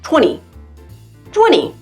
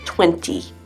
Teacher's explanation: But other times, the T sound disappears like 20.